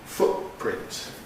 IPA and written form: ˈfʊtprɪnt (footprint)